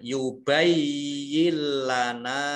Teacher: nun sukun bertemu dengan lam, bacaan idgham bila gunah ya. Idgham yang tidak mendengung